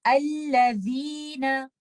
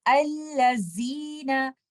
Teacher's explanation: letter जैल में आपको अपनी जुबान की नोक को बाहर लेकर आना है